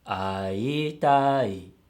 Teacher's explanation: has a low-high-high-low pitch pattern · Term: pitch accent